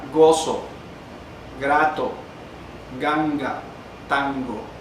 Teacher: La oclusiva velar sonora, oclusiva velar sonora, está en la zona del velo